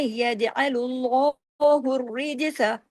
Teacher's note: جیم پہ دوبارہ کلکلا کریں